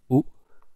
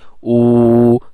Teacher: the tongue will be at its highest position at the back surface of the vocal tract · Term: back vowels